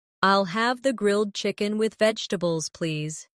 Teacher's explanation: Pay attention to the rhythm. The main stress is on grilled chicken and vegetables.